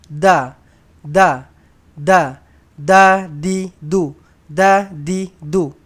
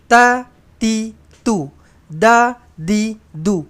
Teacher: Lidah kita hujung tu kita tolak dekat belakang gigi atas, bawah, belakang gigi atas ni.